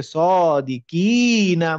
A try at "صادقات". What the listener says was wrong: মানে বেশ অনেক লম্বা টান দিচ্ছেন, অত না